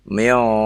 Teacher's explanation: Huruf-huruf isti'la menyebabkan ya hukumnya dibaca tebal ya, sehingga dengung ikhfanya tersebut menjadi tebal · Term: ikhfa yang tebal